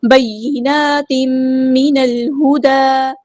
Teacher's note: وَبَيِّنَاتٍ، نون پہ حرکات مد آئی ہے، 2 کاؤنٹس لمبا کریں گے۔ تنوین کے بعد میم ہے، ادغام مع الغنہ ہو رہا ہے، ادغام یعنی ادغام ناقص ہو رہا ہے۔ · نون کو ہم نے لام کے ساتھ ملا دینا ہے، حمزۃ الوصل ہمارا ڈراپ ہو جائے گا، لام یہاں پر لام قمری ہے، اس کو ہم ظاہر کریں گے، ہاں سمپل ادا کریں گے۔